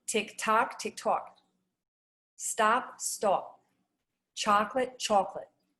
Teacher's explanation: So the short O often rounds and can become more like AW or ALL sounds.